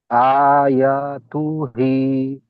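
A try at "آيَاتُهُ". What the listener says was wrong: হি নয়, হু, হা উল্টা পেশ হু। তু হু। তুটার তো টান দেবো না তো, বললাম।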